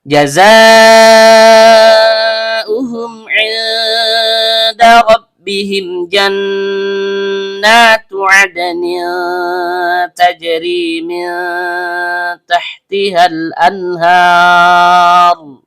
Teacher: Jim tengah lidah naik memantul ke langit-langit.